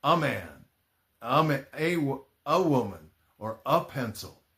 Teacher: most of the time, at least here in the United States, people pronounce it like the schwah a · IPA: /ə/